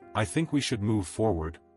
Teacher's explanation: that rising inflection at the end of a sentence that makes a statement sound like a question. When you say, "I think we should move forward," you are signaling to the room that you are seeking their permission. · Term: uptalking